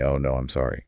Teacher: An invisible W sound intrudes just to bridge the gap. >> You don't say no I'm, you say no I'm. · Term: phantom consonant, Intrusion